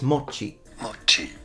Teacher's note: he actually put a little tsu as well